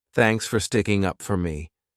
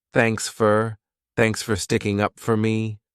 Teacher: notice that the word for sounds like fur this is because it's unstressed